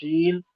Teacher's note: बीच जबान तालू से मिलकर शीन अदा होती है। इसमें शी की आवाज आती है जो तमाम फूफ में एक अलग आवाज है।